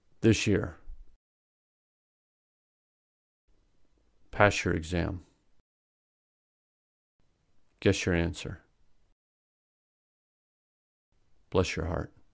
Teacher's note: S plus y equals sh. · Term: palatalization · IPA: /ʃ/